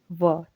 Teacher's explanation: जिसका उच्चारण जो है दोस्तों दांत और होंठ के माध्यम से होता है, जिसे हम दंतोष्ठ्य ध्वनि कहते हैं, तो वो है दोस्तों आपका ऑप्शन नंबर बी, व।